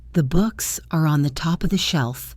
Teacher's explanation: For example, in the sentence, "The books are on the top of the shelf," the words books, top, and shelf will get the stress and be pronounced clearly. The other words, the, are, on, the, of, the, will be spoken very quickly and without emphasis. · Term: squeezed in between the beats